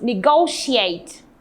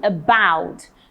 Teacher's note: the stress is on the second syllable for about the second syllable for negotiate